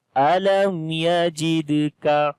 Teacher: On the dal we make qalqala, which is the weak qalqala.